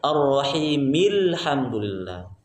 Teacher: Hamzah wasolnya hilang, ya, maka dibacanya ar-rahimil hamdulillah. Kalau membaca ar-rahimi alhamdulillah berarti itu salah, ya, tidak boleh, ya, tidak boleh baca ar-rahimi alhamdulillah.